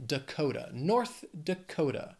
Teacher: Dakota has three syllables and the stress is on that second syllable